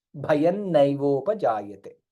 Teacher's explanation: ಅನುಸ್ವಾರ followed by ನಕಾರ hence additional ನಕಾರ comes here